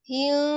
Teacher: ketika mim sukun ketemu dengan baknya itu ikhfa ya. Tidak terlalu dirapatkan bibirnya